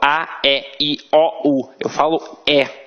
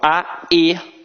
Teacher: Aqui no Rio de Janeiro, a nossa pronúncia é muito aberta.